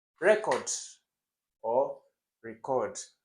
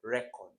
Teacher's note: Record has the stress where it should be. That's on the RE, the first syllable.